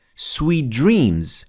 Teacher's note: the d came after the t so the d prevailed over the t